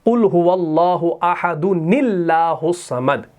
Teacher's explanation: تو اس نون کو ہم نے اس لام سے ملانا ہے تو یہاں پر یہ حمزہ بھی پڑھنے میں نہیں آئے گا اور یہ لام بھی پڑھنے میں نہیں آئے گا. براہ راست یہ نون زیر جو ہے اس لام کے ساتھ مل جائے گا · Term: نون قطنی